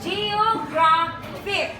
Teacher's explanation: So the stress there in geographic is graph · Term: penultimate syllable